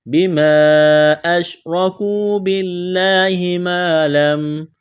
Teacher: لفظ اللہ کے نام سے پہلے زیر ہے، لفظ اللہ کے نام کو باریک کرنا ہے